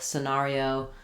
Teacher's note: the stress on the middle syllable makes the E just be a reduced vowel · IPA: /sɪˈnerioʊ/